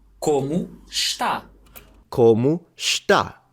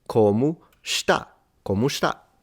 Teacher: Interesting that the S is a full-on sh.